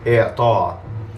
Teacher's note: The only one that's slightly weird is the masdar of a verb with a missing final consonant, because of course it follows the same pattern as idrab and i'lan, but since there's no final consonant, you end with this abrupt ending, represented by a hamza